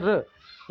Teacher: जैसे र, रा बोलिए आप, जब रा बोलोगे तो मुंह के भीतर जो छत है उसके आगे की तरफ आपकी जीभ जाती है। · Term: मूर्धन्य